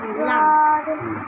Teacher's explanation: জিহ্বার আগার কিনারা সামনের উপরের দুই দাঁতের মাঝের সঙ্গে লাগিয়ে